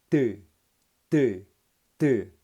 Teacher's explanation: 터지면서 발음하기 때문에 파열음이에요. 평음이자 파열음입니다. 그러니까 평파열음이라고 하는 거예요.